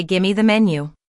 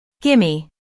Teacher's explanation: when we say give me quickly, it often sounds like gimme. That's a common reduction in fast, natural speech. So instead of give me the menu, you might hear someone say gimme the menu.